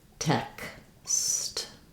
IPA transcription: ɛks